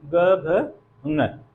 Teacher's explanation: इन ध्वनियों का जब हम उच्चारण करते हैं तो हमारे स्वर तंत्रियों में कंपन होता है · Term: सघोष